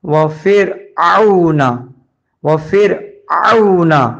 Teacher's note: اس کے بعد وَفِرْعَوْنَ، وفر میں واو زبر وا سے گزر کے فا راز فر پڑا ہے، را جزم والے سے پہلے زیر آیا ہوا ہے تو اس لیے پتلا پڑھنا ہے را کو، وفر، اور عین واو زبر او، او، عین کو حلق بیچ میں سے پڑھتے ہیں